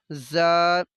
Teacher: زال اور زا میں فرق ہے، زال کی آواز کو نرمی سے، زا کو تھوڑا سختی سے، جیسے سیٹی کی آواز آتی ہے